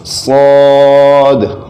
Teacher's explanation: تو یہ حروف مستعلیہ میں سے بھی ہے صاد، اس کو موٹا پڑھیں گے